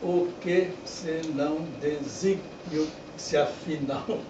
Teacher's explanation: Eu tive que fazer desígnio como se tivesse três sílabas e não quatro. Porque senão não caberia.